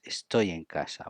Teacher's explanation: We link Y and E. Y is a consonant but sounds like a vowel.